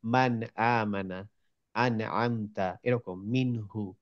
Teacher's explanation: তার মধ্যে আমরা ইজহারটা শিখেছিলাম, থ্রোট লেটার। যদি নুন সাকিনের পরে যদি থ্রোট লেটার থাকে তখন আমরা নুনের উচ্চারণটা ক্লিয়ার উচ্চারণ করব।